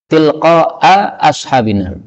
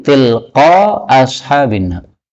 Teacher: Ini kan berarti hamzah dua kali. Nah, hamzah dua kali AA ini susah bagi orang Arab, sehingga sebagian orang Arab menghapusnya menjadi tilqa ashabina.